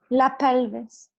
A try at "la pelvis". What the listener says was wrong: Nice,